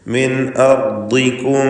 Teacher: അർദികും റായിന് തഫ്ഖീം, ദ്വാദിന് തഫ്ഖീം. ദ്വാദിന് കസ്റ ആയതുകൊണ്ട് കുറഞ്ഞ തഫ്ഖീമേ വരികയുള്ളൂ.